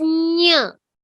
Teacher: Your tongue is touching the front as well as the back. So it is nya. It's a talu.